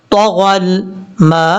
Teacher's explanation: اور یہاں پر میم کے بعد الف الف کے اوپر مد ہے، اس مد کو مد متصل کہتے ہیں اور اس کو 2.5 الف کے برابر لمبا کرنا ہے